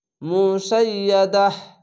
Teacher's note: থামতে গেলে দাহ পরিবর্তন হয়ে যাবে, হা হয়ে যাবে